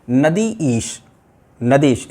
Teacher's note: ऐसा करते समय हुआ क्या है, एक्चुअली ये जो ई है, पहले शब्द का अंतिम वर्ण और द्वितीय शब्द का प्रथम वर्ण, ये जो ई है, ये दोनों मिलकर एक हो गई हैं और हमारे मुख से स्वतः ही ई, ये ध्वनि निकल आई है। ये परिवर्तन हो गया है और ये दोनों मिलकर के हमारे मुख से शब्द निकला है नदीश। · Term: संधि